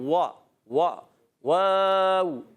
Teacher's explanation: वाव की अदायगी होती है होठों की गोलाई से, दोनों होठ गोल करके वा वा वाव, और जब हरकत अदा करेंगे वा वाव ज़बर वा।